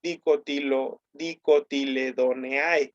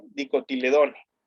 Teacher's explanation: Nótese que todas las familias, como todos los taxones en la nomenclatura, tienen la terminación con el diptongo AE. Esto en latín se pronuncia como E. Entonces, no se dice dicotiledoneae, se dice dicotiledone, ¿sale?